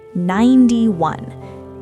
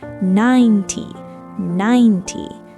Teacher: The stress is on the first part, 9. The T part is super fast and soft.